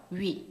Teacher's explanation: 위 하면 입이 입 모양이 우에다가 옆으로 움직여요